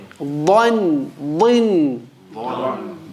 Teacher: The back of the throat rises when you say it, and the side of the tongue touches the upper teeth on that side, on the left side when you say it. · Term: ضاد